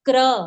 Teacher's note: इस प्रकार लिखा जाएगा, क के साथ रेफ और उकार की ध्वनि मिश्रित करके बोला जाता है क्रू। क्रू ओष्ठ की जो आकृति है वो हो जाती है इस प्रकार, सिकुड़ जाते हैं, तो वह स्पष्ट उकार का उच्चारण है। उसको रू नहीं बोलना है।